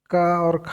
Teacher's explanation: का वर्ग के कंठ होते हैं कंठस्थ ध्वनिया।